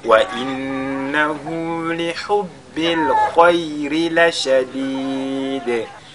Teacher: Khayri, la lettre Ra, elle est lue avec At-Tarqiq